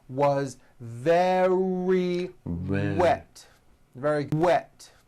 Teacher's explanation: Remember, very starts with a V sound followed by a strong R.